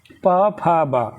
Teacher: ये किस में आते हैं? ओष्ठ में आते हैं।